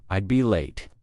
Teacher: I'd be late goes down in inflection.